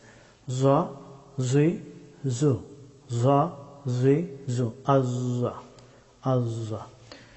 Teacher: জ হরফটি উচ্চারিত হয় জিহ্বার অগ্রভাগ এবং সামনের এই দুই দাঁতের অগ্রভাগ, এখান থেকে জ হরফটি উচ্চারিত হয়।